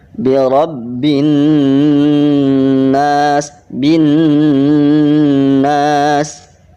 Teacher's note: Cara bacanya gunnah itu masuk ke hidung, digunakan itu kalau ada artinya gunnah itu adalah dengung, tetapi secara praktek itu harus adanya penekanan kemudian masuk ke hidung 2 sampai 3 harokat